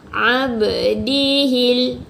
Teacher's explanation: Tapi qalqalah kat sini adalah qalqalah sughra, qalqalah yang kecil. Jadi kita dengar pun tak terlalu kuat.